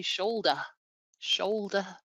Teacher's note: That R is quite unpronounced, certainly with my accent